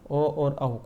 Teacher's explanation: ओ और औ जो है इनका उच्चारण स्थान कंठ और ओठ से होता है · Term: कंठोष्ठ